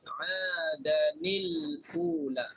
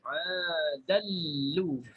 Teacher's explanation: Serta diidghamkan tanwin adan ke dalam lam · Jadi bagi Abu Am, dinaqalkan baris hamzah kepada lam. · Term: idgham bila gunnah